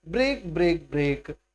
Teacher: the speaker repeats the word break to create a line of 3 stressed syllables in a row